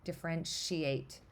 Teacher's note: So listen to what happens at T when I say differentiate. I don't hear the T. It kind of, the way my mouth moves, it sort of accidentally makes it sound like sh.